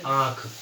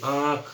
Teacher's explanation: हल्का ना की आवाज आती है इसे बोलते प्यारे दोस्तों अनुनासिक इसको मैं थोड़ा और एक्सप्लेन करता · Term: चंद्र बिंदु